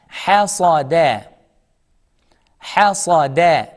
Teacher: The second letter is heavy, sa, not seen, not sa, saw. And the last letter is soft, smile, da.